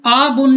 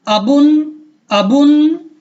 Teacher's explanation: حمزہ زبر آ، با دو پیش بن ابن ابن ابن، آبن نہیں کرنا، کیوں؟ کیونکہ حمزہ پر صرف زبر ہے، اس کے ساتھ کوئی الف بھی نہیں ہے یا کھڑی زبر بھی نہیں ہے، تو پھر اس کو کھینچنا نہیں ہے